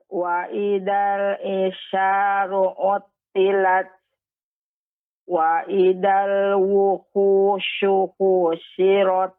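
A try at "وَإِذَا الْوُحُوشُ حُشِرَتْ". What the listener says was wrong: cepat Ibu pengucapannya. Wuhushu husyirat.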